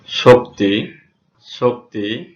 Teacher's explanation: তালবস্য মুক্ত অবস্থায় সবসময় তালবস্য এর উচ্চারণ ইংরেজি SH এর মতো হয়। যেমন শক্তি, শক্তি এখানে তালবস্য মুক্ত অবস্থায় SH এর মতো হয়েছে।